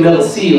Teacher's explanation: In Paris, they say merci, right? They say the ra as ghain. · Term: Parisian ra